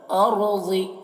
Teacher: را کو پر پڑھنا ہے اور ضاد کو پر پڑھنا ہے